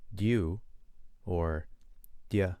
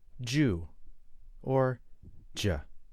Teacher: If I relax when I say dew or dia, it softens. It breaks down into Jew or J. So, to make a J sound in what he says, the D and the Y must be next to each other.